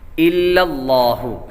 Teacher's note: لفظ اللہ کے لام سے پہلے حرف پر زبر ہے تو لفظ اللہ کے لام کو پر پڑھیں گے